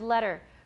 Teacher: there's no T sound in this word at all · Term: tap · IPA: [ɾ]